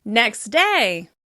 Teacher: we often drop the /t/ at the end of the first word